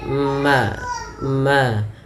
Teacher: bibir kita yaitu adanya huruf mim yang mana mim termasuk Daripada makhrajnya keluar daripada bibir kita yaitu dirapatkan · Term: izhar syafawi